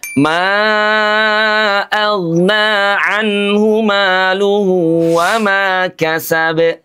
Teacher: karena tidak ada tanda tasdid jadi langsung kita qalqalahkan. Tidak perlu ditahan, tidak perlu dijeda.